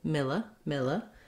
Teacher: it's going to be a very short, reduced I sound. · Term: reduced vowel